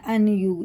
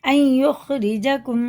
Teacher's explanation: پہلے جزم ہے پھر تشدید ہے تو نون بالکل نہیں پڑھا جائے گا